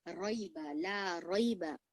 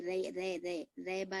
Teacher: لا ایک تو را موٹا پڑھیں گے, باریک نہیں پڑھیں گے, رے رے رے ریبا نہیں پڑھیں گے, ٹھیک ہے.